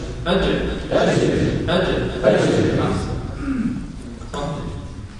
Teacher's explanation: ومعلوم أن الجيم حرف شديد. ما معنى شديد؟ ينحبس عنده الصوت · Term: حرف الجيم